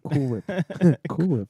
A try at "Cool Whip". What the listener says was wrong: Cool Whip. Why are you pronouncing the H?